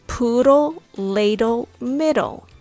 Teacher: they are dl clusters but sounds exactly like the tl clusters in american english